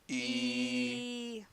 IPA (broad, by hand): iː